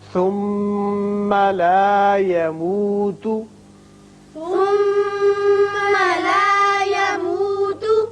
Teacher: میم مشدد ہے، غنہ کیجئے